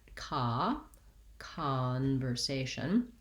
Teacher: they could have an ah sound in this word i think conversation probably has secondary stress on the first syllable so it uses that clear vowel ah watch out that you're not saying something more o like so